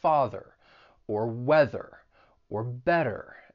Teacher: in the US, you want to pronounce those R's in words like father or weather or better. And notice that flap T when I say better.